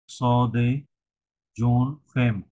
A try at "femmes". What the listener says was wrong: ওটা আছে, ওটা ফেম যদি হবে না, ওটা হবে ফার্ম। কয়াকার ম, ফার্ম উচ্চারণ হবে, হ্যাঁ? যদিও ফেমই লেখা আছে আসলে, কিন্তু ওটা ফার্ম উচ্চারণ হয়।